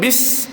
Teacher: sin tu kena jelas bunyi dia, bunyi apa? Angin yang keluar, hamas dan desiran tu